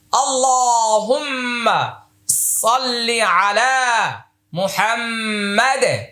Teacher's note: এটা মুহাম্মদ সাল্লাল্লাহু আলাইহি ওয়াসাল্লাম মানে নবীজির নাম, এটার ভিতরে একটা ওয়াজিব গুণা আছে। মুহাম্মাদ শেষে আবার কলকলা।